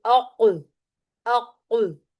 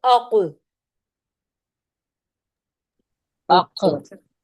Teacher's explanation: اقصا اللسان جب کوے یعنی لحات کو لگے تو ایک حرف ادا ہوتا ہے قوف